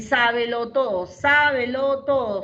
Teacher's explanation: la última palabra se queda con el acento